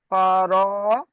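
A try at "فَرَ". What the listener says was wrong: ফা টান হয়ে যাচ্ছে, ফার। আইন নয়, আইনের নোক্তা থাকে না। হ্যাঁ, গইন জাবার। ফারগ।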